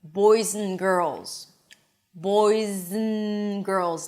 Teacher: I even connected the d to the n immediately. · I drop the d. I reduce the a to uh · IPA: ən